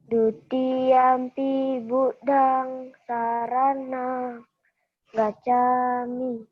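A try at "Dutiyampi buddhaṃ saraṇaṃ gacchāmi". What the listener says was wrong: Bukan sarana, tapi saranang.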